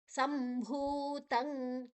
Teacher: ಅನುಸ್ವರದ ಉಚ್ಚಾರಣೆ ಮ ಮುಂದಿನ ಅಕ್ಷರ ಬ ಇದೆ